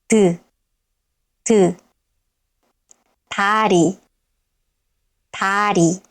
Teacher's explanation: At the beginning of a syllable, it sounds somewhere between d and t, but it's more closer to d